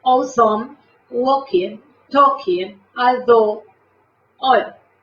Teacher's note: Todas estas A se están convirtiendo en casi una O. Sigue siendo una A y la pronuncian, la forman casi, en la fonética la pronuncian como una O.